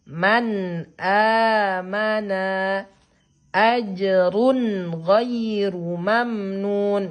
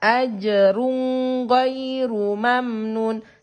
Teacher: Tidak boleh ditahan. Tidak boleh didengungkan. Jadi sempurnakan bunyi suara nun sukunnya.